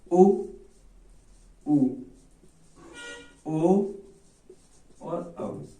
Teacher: हमारे ओठों की आकृति कैसी हो जाती है? वृत्ताकार हो जाती है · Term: वृत्ताकार स्वर